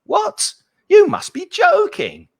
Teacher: So you really go up and down with the intonation the more surprised you are.